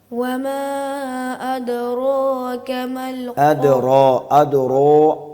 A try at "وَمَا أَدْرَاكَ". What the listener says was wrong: ادرو نہیں پڑھنا ہے، اس کو واو کی طرف اشارہ نہیں دینا، ادرا ادرو اگر پڑھیں گے تو اس میں واو کی مشابہت ہو رہی ہے، وما ادراک